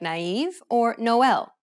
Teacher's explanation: vowel separately from the preceding vowel that is to say that you should not combine the two vowels together instead you should pronounce them in separate syllables